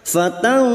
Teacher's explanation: nun sukun bertemu fa ikfa hakiki kita samarkan bunyi nun sukun dan mendengung selama 3 harakat